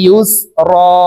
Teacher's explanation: মা আল ফাইন্না মা আল, আইন সিন পেশ উস রজের রি, উস রি, ইয়া সিন পেশ ইউস র আলিফ দুই জবর রন, ইউস রন। এই তানবিনওয়ালা র কে এক আলিফ টেনে পড়তে হবে, কারণ হরফের উপরে দুই জবর থাকলে এক জবর সরিয়ে ফেলে বাকি এক জবর রেখে এক আলিফ টানিয়া পড়িতে হয়। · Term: ইওয়াজ